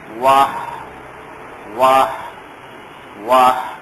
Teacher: یہ آواز یہ ہے, وا میں آواز ہونٹوں کو ذرا گول کریں گے, اور ہا میں حلق کے درمیان کے حصے سے اس کو ہلکا ہلکا کر کے نکالیں گے